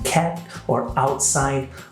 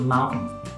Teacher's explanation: people in the US also swallow the T at the end of syllables, like in cat or outside, or often an N, as in the word mountain. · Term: glottal stops